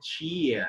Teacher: and the last R sound is silent. You can't, means it is not pronounced.